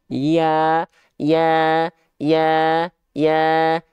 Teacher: Tengah lidah kita angkat ke langit-langit tapi tidak menyentuh ke langit-langit hanya mengarah saja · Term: huruf ya